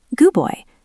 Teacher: We stop the air for the D, but we don't release it. We don't say good dub boy, just good boy.